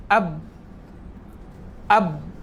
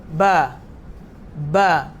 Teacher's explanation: makhraj huruf ba tu adalah di kedua bibir, maksudnya bibir atas dan bibir bawah bersentuhan, maka akan keluarkan huruf ba